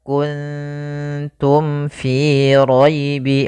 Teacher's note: kan makhrajnya daripada bibir kita maka mim itu kan rapat Ma maka di sini harus jelas suara mimnya tidak boleh ditahan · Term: izhar syafawi